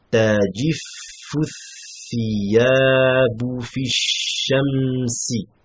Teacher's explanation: on passe directement du fa au tha, parce que le hamzatul wasl ne se prononce pas